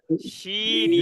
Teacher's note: যদি কোনো ব্যক্তি জিহ্বার মধ্যখান তার বরাবর উপরে তালুর সঙ্গে লাগায়